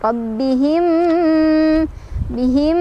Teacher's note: ada idgham mimi karena ada mim sukun bertemu mim, cara bacanya berdengung